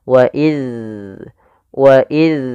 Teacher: hati-hati di dalam melafalkan huruf dalal jangan sampai digantiganti huruf z kesalahan yang sering terjadi adalah menggantinya dengan huruf Z dengan membunyikan waiz